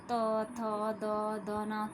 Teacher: जैसे त, थ, द, ध, न। तो जब हम इनको बोलते हैं तो हमारी जीभ जो है बिल्कुल दांतों के साथ स्पर्श करती है। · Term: तवर्ग